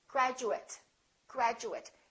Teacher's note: if it's an adjective or a noun, then this is reduced, and it kind of sounds like it or et.